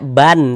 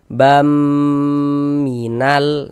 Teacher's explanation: Bunyi tanwin ini masuk ke huruf mim, melebur ke huruf mim. Nah, dibaca nasibam, bam, jangan dibaca ban, tapi dibaca bam. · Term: idgham bi gunnah